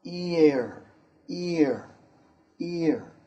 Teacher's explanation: ia is a long sound in english it moves from e to uh